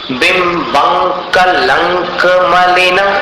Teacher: मलिन का म जो है वहां पर 1 बार होठ मिलाना है, बाकी कहीं पर नहीं मिलाना।